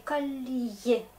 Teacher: Si je note un mot comme ça, calier, c'est le mot français d'ailleurs, et regardez, je prononce calier parce que l'accent est là, un mot étranger, donc l'accent, on garde un peu la musique de mot. On s'arrête un petit peu, on dit calier, comme si on fait un petit stop, mais tout doux